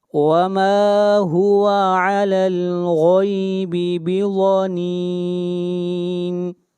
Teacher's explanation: اگلی آیت وَمَا هُوَ عَلَى الْغَيْبِ بِضَنِينٍ، غین کو موٹا پڑھیں گے، غین حروف استعلاء میں سے ہے اور ضاد بھی حروف استعلاء میں سے ہے، اس کو موٹا پڑھیں گے، وما هو على الغیب بضنین۔